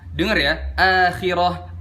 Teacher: akhirah adna tafkhim, lebih ringan dari tafkhim yang biasanya. Yang salah itu kita baca akhirah itu ketebelan.